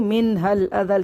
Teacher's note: وقف کی صورت میں پڑھیں گے من حل اذل، کیونکہ لام کا زبر حالت وقف میں حذف ہو جائے گا، لام ساکن ہو جائے گا، تو وقف صورت میں آواز آئے گی ذا لام زبر ذل کی آواز آئے گی.